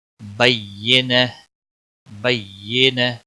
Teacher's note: گولتا ہا میں بدل جائے گی، ہا ساکن بن جائے گا، وقف کی صورت میں ہا ساکن بن جائے گا۔